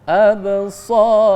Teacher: Ba mati, maka dipantulkan ya, namanya qalqalah sugro karena di tengah.